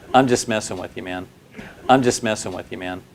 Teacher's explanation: The M in I'm links to the j in just to sound like just.